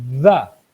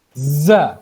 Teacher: ذا ایک نرمی سے پڑھا جا رہا ہے, دوسرا جو ہے وہ سیٹی کی طرح کی آواز سے پڑھا جا رہا ہے, یعنی وسرنگ ساؤنڈ ہے